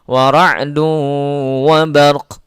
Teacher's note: maka bunyi ra-nya yang dominan, wa bar, qafnya ada tapi tidak usah terlalu tebal, tidak usah terlalu jelas di situ. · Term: raum